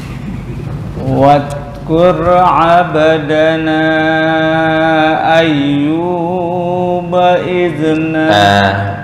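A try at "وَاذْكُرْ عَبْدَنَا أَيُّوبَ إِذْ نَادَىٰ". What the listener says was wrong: Hanya 2 harokat atau wasol. Jangan lebih. Bukan bait, itu kepanjangan.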